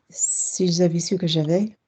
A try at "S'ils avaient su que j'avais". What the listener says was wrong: That's fucking copying. That's proper copying. Well done.